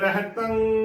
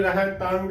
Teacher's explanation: ਜਦੋਂ ਟਿੱਪੀ ਦਾ ਉਚਾਰਨ ਕਰਨਾ ਹੈ ਤਾਂ ਗਗੇ ਦੀ ਆਵਾਜ਼ ਬਿਲਕੁਲ ਨਹੀਂ ਆਉਣੀ ਚਾਹੀਦੀ ਸ਼ੁੱਧ ਉਚਾਰਨ ਰਹਤੰ ਬੋਲਣਾ ਹੈ ਨਾ ਕਿ ਰਹਤੰਗ ਗਲਤ ਉਚਾਰਨ ਹੋਵੇਗਾ